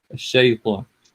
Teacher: بص if you just leave it كده بتطلع شا، لأن يعني in the Egyptian dialect it's شا، بس هي في القرآن بتبقى مرققة فتبقى الشيطان